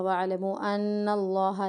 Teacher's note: نون مشدد پر ہمیں غنہ کرنا ہے